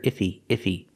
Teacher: He is not a stressed word. So sometimes you don't hear the H. You hear ify.